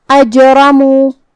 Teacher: جو کہ یہاں جیم پہ جزم ہے تو یہاں جیم کا حکم ہے قلقلہ. قلقلہ کا معنی ہے حرف ساکن کو ہلانا، تو ہم جیم کو ہلاتے ہوئے یہ کلمہ کو ادا کریں گے · را کا حکم ہے تفخیم کیونکہ اس پہ زبر ہے تو ہمیں را کو بھاری آواز میں پڑھنا ہے